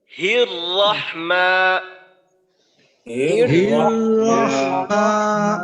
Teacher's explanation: পুরা বিসমিল্লাটা যখন আমরা উচ্চারণ করব, ঠোঁট একবারের জন্য গোল হবে না, পুরা ঠোঁটটাকেই খোলা রেখে। · কারণ আমরা জানি তাসদিদ অর্থাৎ দুইটা হরফ, কোন হরফে তাসদিদ থাকলে ওই হরফটা ডাবল, এইটা বুঝায়। তো এখানে দুইটা র, উভয় রকেই মোটা করে উচ্চারণ করতে হবে।